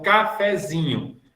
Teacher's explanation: O zinho é grau 3. Quer dizer, é a sílaba mais forte da palavra.